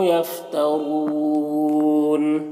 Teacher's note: नून में वाव मद्दा है, एक अलिफ के बराबर खींचेंगे। रॉ के ऊपर पेश है, रॉ को पूर पढ़ेंगे।